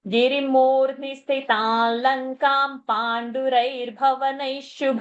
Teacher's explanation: गिरी that is short and मु is long and that नी is short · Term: दीर्घा साउंड